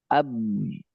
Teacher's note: Dia tidak punya sifat rakhawah ya dia punya sifat syiddah sama jahar berarti dia tidak akan ngalir